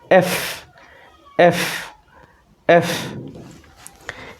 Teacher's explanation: দেখুন আমার দিকে একটু খেয়াল করুন, যেখানে এফ আমার নিচের যে ঠোঁট যেটা, এটা হচ্ছে আমার উপরের দাঁতের সাথে লেগেছে, দুই পাশ থেকে বাতাস বের হয়ে গেছে।